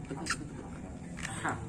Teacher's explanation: Ha itu dikeluarkan dari tengah-tengah tenggorokan. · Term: ha besar